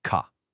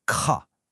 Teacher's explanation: See that big puff of air? That's mahapana. That's aspiration.